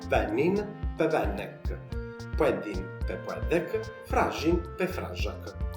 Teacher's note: prima della K abbiamo una ripetizione della vocale tonica, quindi della vocale che porta l'accento tonico su di sé. Questa è una caratteristica che ritroveremo in tutti i verbi regolari, quindi la possiamo appunto dare come una regola fissa nella formazione del tema del perfetto per tutti i verbi.